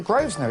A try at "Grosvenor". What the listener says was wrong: You don't pronounce the S. No. It's a silent S.